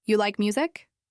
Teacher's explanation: lifting her voice slightly at the end of the question. Instead of you like music with a flat tone, she practiced you like music with her voice rising gently at the end. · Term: intonation